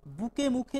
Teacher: অল্পপ্রাণ মহাপ্রাণ ধ্বনি হয়ে যাচ্ছে কিন্তু বাকযন্ত্রের কিন্তু একই স্থান থেকে উচ্চারিত হচ্ছে